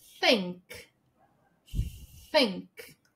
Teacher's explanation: língua no meio do dente e saindo o ar. Think. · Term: unvoiced